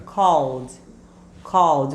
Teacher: na pronúncia ele vai ficar com som de D. Mas é um Dzinho bem murcho, Bem ó, levinho.